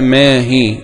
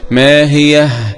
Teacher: يقف يعقوب بهاء السكت